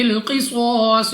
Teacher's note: قاف مستعلیہ میں سے ہے، صاد بھی مستعلیہ میں سے ہے، دونوں کو موٹا پڑھنا ہے